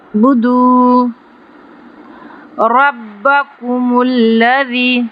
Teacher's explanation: را پہ تفخیم کریں گے، موٹا پڑھیں گے